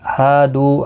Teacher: ہا الف مدہ ہے، دو واو مدہ ہے، دونوں کو ایک ایک الف کی مقدار کے برابر کھینچ کر پڑھیں گے